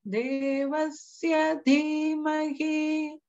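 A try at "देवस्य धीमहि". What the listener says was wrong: It just sounded like the va was going down, whereas that would be the middle swara. So that's one small thing to watch out for.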